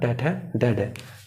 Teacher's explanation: मूर्धन्य होता है जहाँ पे जीभ टिकी हुई होती है, उसके ऊपर का जो स्थान होता है उसको बोलते हैं मूर्धन्य